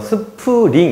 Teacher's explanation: S랑 P에 모음이 안 붙어 있지만 으라는 모음을 굳이 집어넣어 스프링 이렇게 하고요.